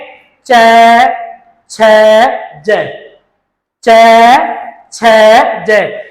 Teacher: चैवरग, जैसे चैवरग का उच्चारण करेंगे च, छ, ज, च, छ, ज। इनका उच्चारण करते समय जीवा होती है वह तालव का स्पर्श करती है